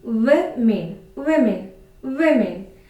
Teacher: So the stress is on the first syllable. You can say this word as W.